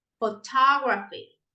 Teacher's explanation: Now we stress the second syllable